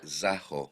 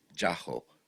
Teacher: the word for go for instance is pronounced zaho by the older generation and jaho by the younger one